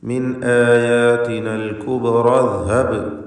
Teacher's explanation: ഇദ്ഹബ് ഈ ഹംസ സ്വാഭാവികമായും ചേർത്ത് വായനയിൽ കളയപ്പെടേണ്ടതാണ്. തൊട്ടു മുമ്പുള്ള പദവുമായി ചേർക്കുകയാണെങ്കിൽ മിൻ ആയാതിനൽ കുബ്റ ഇദ്ഹബ് എന്ന് ഓതേണ്ടതാണ്. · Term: ഹംസത്തുൽ വസ്ലാണ്